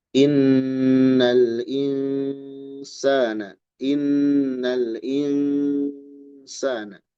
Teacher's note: nun sukun bertemu sin ditahan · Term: ikfa hakiki